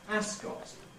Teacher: This name, in race course, is traditionally called Ascot. But increasingly, one hears people pronouncing it Ascot, with a strong vowel in the second syllable. Both are possible, therefore, in a name like this.